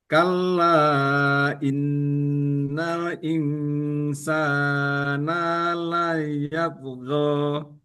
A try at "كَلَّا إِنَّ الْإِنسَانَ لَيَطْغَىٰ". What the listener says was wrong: Nanya, nanya pendek saja, tapi yang panjang adalah sinnya.